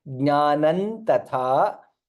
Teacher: सर्वं जनार्दनात् योगो ज्ञानम तथा था महाप्राण and previously jnanam tatha anuswara followed by takara, hence additional nakara comes